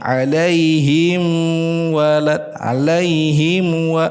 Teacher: Huruf mim dengan huruf wau itu kesamaan makhraj sama-sama berasal dari bibir ya. Maka hati-hati ketika kita mengucapkan ya huruf mim bertemu dengan huruf wau. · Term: mim sakinah